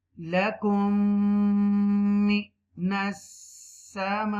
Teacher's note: this is the idgham shafwi here because after a meme sakina another meme is appearing · So this is the one of them is idgham shafwi here, and you make gunna on meme mushadda